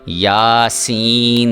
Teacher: سین کی آواز جو ہے یہ آپ کی سیٹی کی آواز جس طرح سے نکلتی ہے اس طرح سے آپ کی آواز آنی چاہیے۔ اگر وہ آواز آئے گی تو میں سمجھوں گا کہ آپ سین کو صحیح طرح سے ادا کر رہے ہیں۔